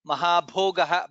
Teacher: Mahabhogah bha is mahaprana.